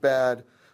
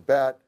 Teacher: when you have a voiced consonant like D after a vowel, as in the word bad, the vowel is longer than it is when there's a following voiceless stop, as in bat.